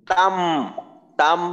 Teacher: আছে মাশাল্লাহ আচ্ছা তাম হবে না তান হবে তাম তাম কারণ নুন সাকিন বা তানভীনের পরে যখন বা আসবে তখন কিন্তু আমরা মিম পড়বো নুন সাকিন বা তানভীন কে মিম দ্বারা পরিবর্তন করে পড়বো তো